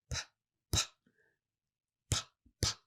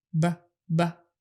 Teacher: you should feel air lots of air coming out with the p sound PP PP but not so much for B BB so practice